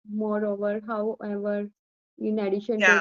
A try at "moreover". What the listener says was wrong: Moreover, no, you're putting stress there. Moreover, moreover.